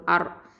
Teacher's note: இந்த ரா வந்து தஃப்ஹீமா வல்லினமாக உச்சரிக்கணும். இந்த ரா அப்படிங்கிறது வந்து தரஃபுல் லிசான் நுனினாவை எழுத்து.